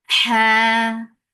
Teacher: Ha with hums make two counts long because this is mad iwat.